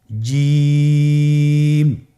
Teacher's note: জিহ্বার মধ্যখানটা লক্ষ্য করুন এবং তার বরাবর উপরে তালুর সঙ্গে লাগান, এরপর হরফটি উচ্চারণ করুন, দেখবেন হরফটি শুদ্ধভাবে উচ্চারিত হবে।